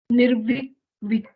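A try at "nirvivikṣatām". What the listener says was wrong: If you read it, there's Sha. Nirvivikshatam.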